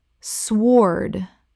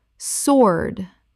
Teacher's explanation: The W is completely silent. It rhymes with lord.